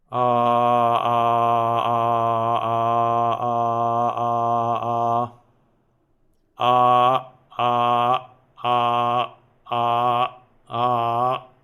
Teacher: detached ahs and forced glottal closure